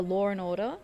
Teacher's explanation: It's a thing where we insert an R sound in between words. It happens a lot because we run our words together. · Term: intrusive R